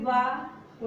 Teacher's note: सघोष यानी इनके उच्चारण में हमारे स्वर तंत्रियों में कंपन होता है, घर्षण होता है, कंपन होता है।